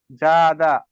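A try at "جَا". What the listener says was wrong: না টান হবে। আলিফ মাদ্দা টান হবে তো।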